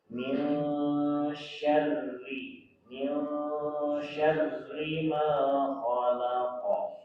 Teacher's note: nun membentuk huruf eng tapi mulutnya sudah sya